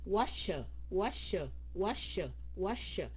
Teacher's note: cái s á mình phải cong lưỡi lên